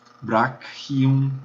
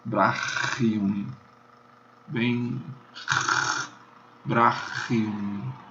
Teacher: Ou você pronuncia isso como um K, brachium, o braço, brachium, ou pronuncia como CH alemão, que é o que mais comumente se faz, brachium, bem, brachium.